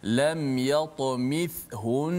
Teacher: bila wakaf di hujung tu nun sabdu, tetap kena dengung. Contoh lam yatamithun, kena dengung juga sebab nun tu sabdu.